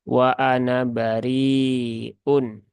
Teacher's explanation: ketika lafaz Ana disambung dengan bariun maka ini sifirnya ini berfungsi sehingga ini alifnya tidak dibaca sehingga nunnya dibaca pendek wa Ana bariun nah seperti itu tapi kalau dia wasal ya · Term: sifir mustatil